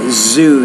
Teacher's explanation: When it's use that word zoo there, not sue, but zoo, you got to put more vibration on that sound.